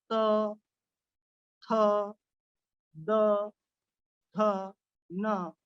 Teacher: दांत को हमारे जीवा का स्पर्श होता है, ऐसे उच्चारण होते हैं जिसे दंत कहते हैं।